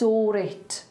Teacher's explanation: when you have an R with a vowel sound after it, it'll slightly tap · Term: linking R